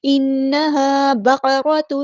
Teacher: با جو ہمارا لائٹ لیٹر باریک پڑھیں گے. قاف ہمارا ہیوی لیٹر پورا ادا کریں گے. را پہ زبر جو ہے آ گئی ہے تو ہم یہاں پہ اس کو بھی پورا ادا کریں گے.